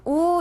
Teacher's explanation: 우는 입술을 동그랗게 만들고 앞으로 내밀면서 소리를 내요 이때 혀은 오보다 조금 높게